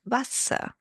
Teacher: the W sounds like a V, and the ER becomes a at the end